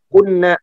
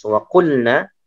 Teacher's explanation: Padahal kita tahu bahwasanya lam itu ya, apa namanya, setelah lam itu huruf nun ya, tapi tidak diinikan ya, apa namanya, tidak dibaca diidghamkan kepada huruf nun, tetapi lamnya dibaca jelas